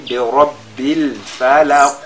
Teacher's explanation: la lettre qaf, n'est-ce pas, a cette autre caractéristique qui est at-tafkhim. Donc ici, pendant qu'on fait al-qalqala, on ressort également, on met l'accent sur son caractère emphatique.